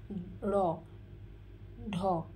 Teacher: জিহবার অগ্রভাগ দাঁতের সাথে দাঁতের গোড়ার সাথে তাড়িত হয় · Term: তারণজাত বর্ণ